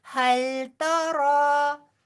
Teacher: تا باریک، را پر اور دو حرف برابر لمبا